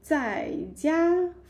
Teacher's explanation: falling tone and first tone